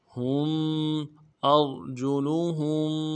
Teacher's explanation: ہا کو آگے میم کے ساتھ ملانا ہے، میم ساکن غنہ کریں گے۔